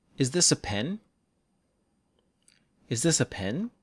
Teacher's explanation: for rising intonation the stressed syllable gets lower